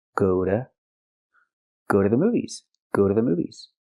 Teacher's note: The T is pronounced like a fast D.